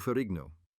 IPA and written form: fəˈrɪɡnoʊ (Ferrigno)